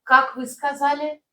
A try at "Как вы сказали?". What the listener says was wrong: Yeah, try to keep intonation down. Remember, I told you an intonation in Russian sentence tend to fall down toward the end. Как вы сказали?